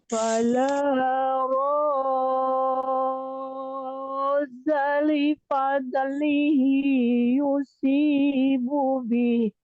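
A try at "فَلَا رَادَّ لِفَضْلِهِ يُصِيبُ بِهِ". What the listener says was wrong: Dalnya ini Bu, ada jeda sedikit, 1 ketukan. Jadi tidak langsung tasydidnya ya. Rod dali. Nah, jadi pas rod dali. Jadi ada jeda. Enggak rodda.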